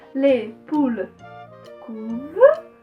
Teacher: O verbo conjugado leva esse ENT, mas apenas na escrita. E na pronúncia a gente corta antes do ENT.